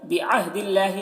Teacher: اللہ کے لام کو باریک پڑھیں گے، اللہ کے لام سے پہلے زیر ہے. وایمانہم دیکھیے یہاں پر میم ساکن کے بعد ثا ہے، میم میں اظہار شفوی ہوگا.